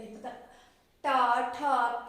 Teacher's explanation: हमारा मूर्धा से क्या हो रहा है, इन वर्णों का उच्चारण हो रहा है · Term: मूर्धन्य वर्ण